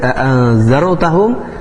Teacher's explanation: ro-nya disukunkan didahului harakat fathah, berarti ro-nya dibaca tebal, dibaca dengan tafkhim